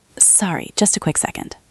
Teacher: You said it quickly and your voice went up a little at the end. It sounded friendly.